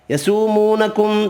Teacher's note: من آل فرعون نون کا اظہار ہوگا، کھڑی زبر ایک الف کی مقدار میں کھینچ کر پڑھیں گے، را ساکن زیر کی وجہ سے باریک پڑھیں گے، عو واو لین ہے۔ یسومونکم دو واو مدہ ہیں، دونوں ایک ایک الف کی مقدار میں کھینچ کر پڑھیں گے